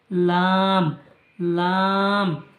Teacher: লাম জিভের ডগার কিনারা উপরের দাঁতের গোড়ার সাথে লাগিয়ে উচ্চারিত হয়